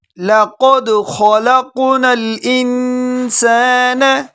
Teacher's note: قاف کو موٹا پڑھیں گے، خا کو بھی موٹا پڑھیں گے، اس کے بعد جو قاف ہے وہ بھی موٹا پڑھیں گے۔ لقد خلقنا الانسان، نون پر غنہ کریں گے۔